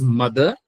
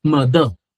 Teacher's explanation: the R sound, when it is ending in nature, it should not be that much harsh or prominent. It should be very soft. So it is pronounced as mother.